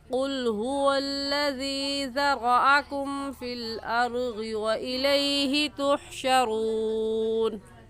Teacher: क़ाफ़ मोटे हरूफों में से है तो इसको पूर करके पढ़ेंगे